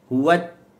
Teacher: Pertemuan hujung lidah dengan gusi dalam keadaan yang sempurna. Yanhabisu fihi nafas. Maka suara tertahan. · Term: syiddah